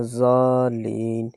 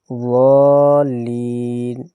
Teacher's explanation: زبان کی بائیں کروٹ اور اوپر کی بائیں داڑھوں کی جڑوں میں جب لگے گی تو پھر ادا ہوگا